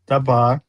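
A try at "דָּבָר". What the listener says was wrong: No, it's not a B. It's not a B sound.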